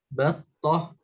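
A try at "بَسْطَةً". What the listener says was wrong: ya lebih tipis lagi sinnya bas. Nah, bastoh.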